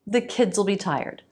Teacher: A dark L at the end of the word.